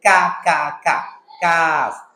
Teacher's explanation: কাফের মাখরাজ হলো জিহ্বার গোড়া থেকে একটু সামনে উপরের তালুর সাথে